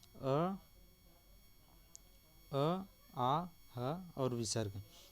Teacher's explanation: अ आ ह और विसर्ग, ये कंठ से बोला जाता है